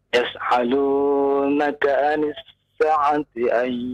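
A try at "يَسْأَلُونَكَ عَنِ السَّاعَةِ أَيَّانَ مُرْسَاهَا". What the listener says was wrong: lihat panjang pendeknya Pak ya. Sa itu panjang berarti ya. Coba praktekkan panjang pendeknya. Tapi ketika baca panjang pendek juga harus tepat ya Pak ya. 2 harokat, jangan ditambah dan jangan dilebihkan ya. Kemudian huruf ain ya.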